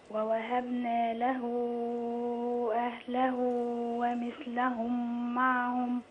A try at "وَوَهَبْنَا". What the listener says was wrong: في حرف مش باين. ووهبنا